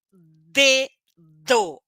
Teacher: O ar explode, é curtinho. E é sonoro porque faz a força no pescoço. D, d, d. Sai pouco vento.